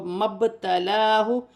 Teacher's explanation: یہاں پہ با ساکن ہے، یہاں پر قلقلہ پیدا ہوگا